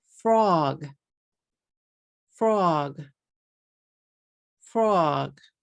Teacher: I'm saying one syllable but if we say it in Katakana it's going to become three syllables · You are going to change a 1 syllable word, frog, into 3 syllables if you say it in katakana, fu, ro, gu.